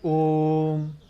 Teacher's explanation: प्लुत स्वर इसमें 3 गुना समय लगता है